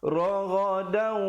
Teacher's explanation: Di situ idgham bi gunnah, masuk dengan dengung kadar panjang dua harakat. Asalnya raghadan, tapi bila datang waw jadi raghadau, dengungkan dua harakat. · hukum izhar syafawi, jangan dilambatkan masuk ke ra itu. Bunyi saja tum terus masuk raghadau.